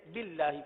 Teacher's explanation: یہاں اللہ کے لام کو باریک اس لیے پڑھیں گے کہ اللہ کے لام سے پہلے زیر ہے